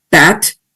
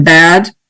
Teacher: vary the pronunciation of the same vowel phoneme, bat, it's shorter than bad